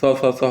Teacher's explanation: वायु हमारे जो वायु मार्ग से निकलता है व इसके उच्चारण में घर्षण करते हुए निकलता है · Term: उष्म व्यंजन